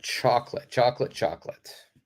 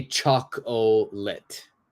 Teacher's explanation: the second o the second o is completely silent